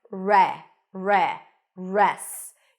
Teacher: you start with an R sound there is no W here okay just an r and then an a sound re re